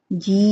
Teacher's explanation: जी English का जी पढ़ते हैं, इसको हम 5 अलिफ के बराबर लंबा करेंगे। जी के साथ ई की आवाज आ जाएगी, जी। थ्रू आउट आवाज निकलेगी, नाक में आवाज नहीं जाएगी, जी।